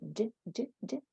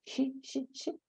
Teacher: put the tip of the tongue behind the alveolar ridge and say, j, j, j.